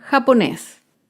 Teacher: japonés es una palabra aguda se acentúa en la última sílaba